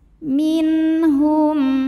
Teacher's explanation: Ada hukum izhar halqi, karena ada nun sukun menghadapi huruf halqi atau huruf tenggorokan yaitu ha. Maka nun sukun dibaca jelas.